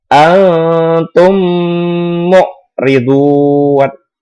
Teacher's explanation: Karena ada huruf mim mati bertemu dengan huruf mim hidup. Cara membacanya didengungkan selama 3 harokat. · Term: idgham mimi